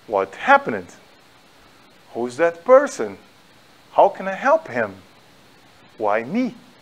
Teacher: Forma interrogativa é parecido. Você decresce e aumenta o finalzinho. Como se fosse uma rampa. Por quê? Porque você precisa entender na entonação que aquela frase é uma pergunta. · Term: finalzinho subido